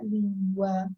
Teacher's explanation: Acentuar a penúltima, aí fica língua. Então, a sílaba tônica não é a que tem o A, é a que tem o LIM. Então, é uma paroxítona.